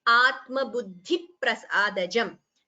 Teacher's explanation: Here after dhi, you have a dvitvam. So second p is heard.